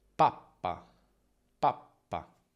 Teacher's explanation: Si scrive con la stessa lettera due volte, quindi con un suono lungo o tecnicamente geminato. Nelle doppie P e B c'è una fase di chiusura più lunga, una piccola pausa.